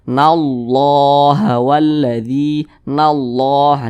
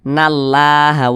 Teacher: cara baca Allahnya itu dibaca tebal atau dibaca takhim jangan dibaca tipis tapi dibaca tebal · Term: tafkhim